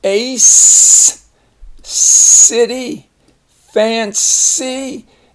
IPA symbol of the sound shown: s